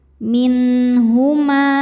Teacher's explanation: Min, ada hukum idzhar halqi. Karena nun sukun bertemu huruf tenggorokan atau halqi yaitu ha. Cara bacanya nun sukun dibaca jelas. Minhuma. Ketika berhenti di ma, hukumnya adalah mad thabi'i dzahiri. · Ketika berhenti di ma, hukumnya adalah mad thabi'i dzahiri. Sebab ada alif sebelumnya berharakat fathah. Kalau berhenti panjang dua harakat. Namun jika diwasalkan, ma nya pendek. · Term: izhar halqi